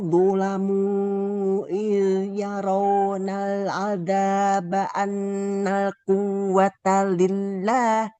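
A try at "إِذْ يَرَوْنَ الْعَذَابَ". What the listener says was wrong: Iz huruf zalnya kurang Ibu. Iz yarawnal azaba annal quwwata lillah. Hanya tadi huruf H.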